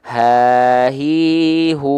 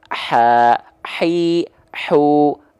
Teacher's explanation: kalau tepat dilafalkan dari tengah tenggorokan pasti karakteristik nafas yang mengalir adalah berbisik atau seperti kita kepedesan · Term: ha kecil